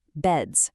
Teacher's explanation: If your throat vibrates at the end, like the D in bed, the plural sounds like a Z.